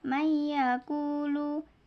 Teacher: meleburkan nun sukun ke huruf berikutnya dan disertai gunah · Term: idgham bhunah